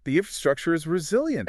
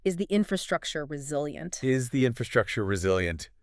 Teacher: You can say it with a completely flat dropping tone.